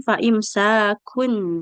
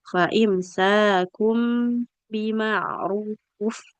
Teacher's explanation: iklab ini adalah mengubah bunyi nun sukun menjadi mim sukun. Ini kan kafnya aturannya dia bukan sukun, tanwin ya.